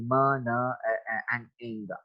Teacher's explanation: share a phonetic feature such as nasality, म न and ing are, ये सारी की सारी जो है वो नेजल साउंड्स हैं।